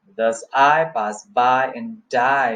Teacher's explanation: I and by and die, they have got the stresses and generally 1 iambic foot per line